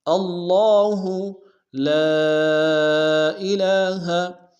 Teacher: لام الف مدہ کے ساتھ مد منفصل بھی ہے، مد منفصل کو کم سے کم 2 الف دار میں کھینچیں گے